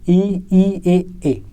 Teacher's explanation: उच्चारण में जीभ का अग्र भाग का प्रयोग होता है, इसलिए दोस्तों हम अग्र स्वर कहते हैं।